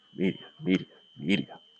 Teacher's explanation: See how heavy that first syllable is